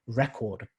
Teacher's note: so when you use it as a noun then the stress would be right to the beginning of the or it'd be on the first syllable so for